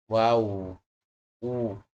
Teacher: menggabungkan dua bibir ke depan dengan mengangkat lidah paling dalam wau u lidahnya mengangkat tapi dia tidak sampai membuat suara yang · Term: huruf wau